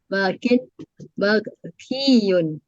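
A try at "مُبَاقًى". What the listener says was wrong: Mab ada maknya, ada mim. Mabakiyun. Bakia, bakin isim fa'ilnya, isim maf'ulnya mabakiyun. Mabakiyun, mardiyun begitu.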